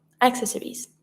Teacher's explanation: You see that we have two C. When you have ACC, you're going to pronounce it like a Ks sound